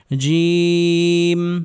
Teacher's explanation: জিম উচ্চারণ হবে জিহবার মধ্যখান উপরের তালো সঙ্গে লাগিয়ে